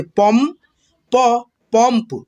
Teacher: यहाँ पे देखिए प में अन की मात्रा लगा एक अनुस्वार, तो यहाँ पे आपको म के रूप में उच्चारण करना होगा।